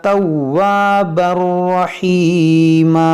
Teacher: ادغام بغیر گنہ کے، کیونکہ یہاں پر حروف یرملون ہے تنوین کے بعد